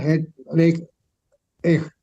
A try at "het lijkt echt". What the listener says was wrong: Lijkt, bukan lekt.